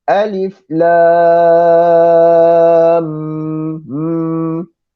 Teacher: Kita kena masukkan mim yang ada pada perkataan lam dengan mim yang ada pada perkataan mim. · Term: musaqqal